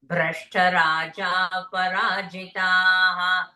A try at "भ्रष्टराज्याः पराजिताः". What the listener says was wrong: Not Raja, Rajyah Parajita. Rajyam. They are deprived of their kingdom. Rashtra Rajyah Parajita.